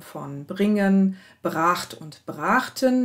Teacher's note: die primäre Berührung des Gutturals mit dem folgenden Dental und dann die Bildung des Reibelauts stattdessen mit einer Ersatzdehnung, also von kurzem Vokal zu langem Vokal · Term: Primärberührungseffekt